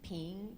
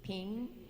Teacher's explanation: this is the rising tone as if you're climbing up a mountain